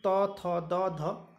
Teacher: तो जो वर्ग है वो त थ द ध, ये दंत से आप देखते होंगे जब भी इनका उच्चारण करेंगे तो दांत पे टच होगी आपकी जिह्वा